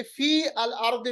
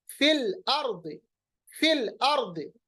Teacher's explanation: हम फा को डायरेक्टली लाम के साथ मिलाएंगे, और ये जो या है हर्फ मद्दा, इसको हम डिलीट करेंगे, इसको हज़फ करेंगे, इसको पढ़ा नहीं जाएगा।